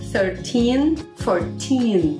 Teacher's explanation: a sílaba forte, the stressed syllable, é exatamente o teen